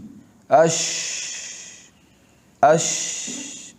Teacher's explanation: په ادا کې اواز په خوله کې خور شي شین اش اواز په ټولو خوله کې خور شي تفشي دا صرف په شین کې دی